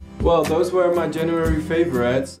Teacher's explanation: going the other direction and pronouncing were as where is peculiar to the Dutch accent